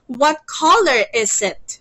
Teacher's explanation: your intonation or your tone should be rising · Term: rising intonation